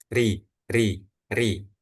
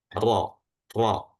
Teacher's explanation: huruf ro yang tebal itu pangkal lidah belakangnya itu naik atau menebal sehingga apa? Sehingga rongga mulutnya itu menyempit.